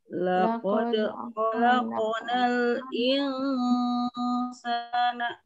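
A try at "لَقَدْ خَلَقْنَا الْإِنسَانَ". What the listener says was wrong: Jadi tidak terlalu dekat ke hidung ya. Sedikit saja tipis ya.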